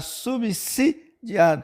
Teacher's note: o s é aqui representa o fonema se né e não o fonema Z